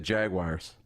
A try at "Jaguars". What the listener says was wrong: Where does it say wire in that name? Jaguar. It's the way it's Jaguar. You're saying Jaguar. You Jaguar. Man, I don't get how you get Jaguar out of that, but to each you do you, bro.